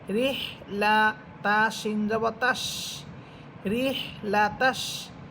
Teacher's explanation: এখানে র হাকে গিয়ে ধরবে, এটা হচ্ছে জিমের মতো হা, আমরা জানি যে এই হা পড়ার সময় বাতাস ছেড়ে দিয়ে পড়বেন না, বরং বাতাসটা একটু চাপিয়ে রেখে পড়বেন, যাতে করে বাতাস যে বের হচ্ছে ওই বাতাসের একটা শব্দ হয়